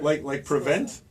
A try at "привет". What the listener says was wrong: Prevent, but without N. Privet. Привет.